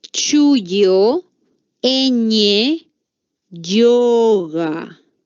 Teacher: el palatal que se produce cuando se juntan la lengua y el paladar